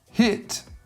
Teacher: with hit, there is a lot of air coming out and your voice box isn't on. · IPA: /h/